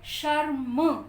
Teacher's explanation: र को हम थोड़ा सा टच करते हैं और म के ऊपर आ जाते हैं, क्योंकि ये र स्वर रहित है, ये अपने आप में कंप्लीट नहीं है, इसलिए हम इसको थोड़ी सी साउंड देके और अगले शब्द, अगले अक्षर के ऊपर वापस आ जाते हैं।